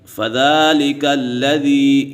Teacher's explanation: اس کے بعد فَذَلِكَ الَّذِي، یا مدہ ہے، یا مدہ ایک الف یعنی دو حرکات کے برابر کھینچ کر پڑھیں گے